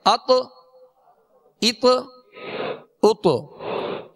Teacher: اب اس کو عطا عطا یعنی زبر نہیں دیں گے، اط اط اط، یعنی مخرج میں لگ کر آواز میں جنبش ہوگی، آواز لوٹتی ہوئی آئے گی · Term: قلقلہ